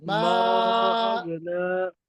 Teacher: गैन पे कलकला नहीं होता है